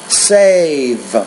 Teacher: because the V is a consonant sound the vowel before it needs to be longer